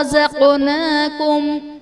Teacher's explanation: رزقناکم میں قاف حرف قلقلہ ساکن ہے تو یہاں پر قلقلہ خوب ظاہر کریں گے۔